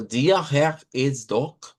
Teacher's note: ahí sí ya estoy usando en Herr lo que es la uvular, en doch la uvular, dort la uvular